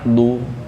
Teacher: Domah ya u. Harus monyongkan u. Kalau kita nggak dimonyongkan suaranya jadi e, kayak suara qalqalah.